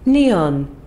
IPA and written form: ˈni.ɒn (neon)